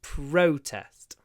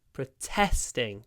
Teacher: when it's a verb, protesting, the stress is on the second syllable.